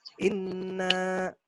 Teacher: Nun tasdid dibaca mendengung 2 harokat ya. Jadi disebut dengan gunnah ya.